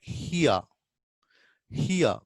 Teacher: We start from e and we glide to yeah. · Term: diphthongs